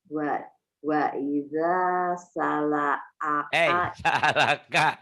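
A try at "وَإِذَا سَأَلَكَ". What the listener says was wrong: Salalaka. Sa'alaka bukan salalaka. Ini alif bukan lam.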